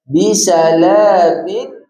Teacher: Ertinya ada suara yang keluar daripada hidung secara semula jadi. Jadi maksud tanpa dengung tu janganlah kita macam bisalamin amin sampai tak ada langsung dengung.